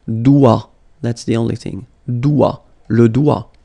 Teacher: Le doigt, le doigt, okay, so don't be frightened by this G because basically you don't pronounce it and then the final T you don't pronounce it. So the only thing you get to pronounce is this combination of three word or letters, sorry, here, D, O, I.